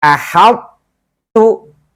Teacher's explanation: tapi diidghamkan ke huruf ta, tapi sifat itbaqnya tidak boleh hilang. Ahadtu, help, to-nya tebal tetap. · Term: idgham naqis